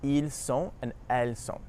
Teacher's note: Notice that the S at the end is actually silent